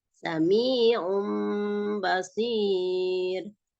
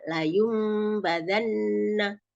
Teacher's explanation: cara membacanya mengubah suara nun sukun atau tanwinnya tadi menjadi suara mim. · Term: iklab